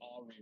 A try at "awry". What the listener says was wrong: You put the emphasis on the wrong syllable.